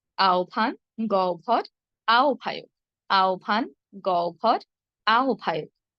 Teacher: হ এর সঙ্গে ব সংযুক্ত অবস্থায় থাকলে আমরা বলবো ওব।